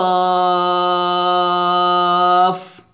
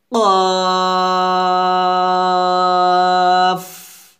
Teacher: কফের মাখরাজটা হবে জিহ্বার গোড়া তার বরাবর উপরে তালুর সঙ্গে লাগিয়ে, অর্থাৎ জিহ্বার গোড়াটা আপনি উপরে তালুর সঙ্গে লাগাবেন। আর এই কফটা যখন উচ্চারণ করবেন অবশ্যই মোটা করতে হবে, কারণ কফটা মোটা হরফ।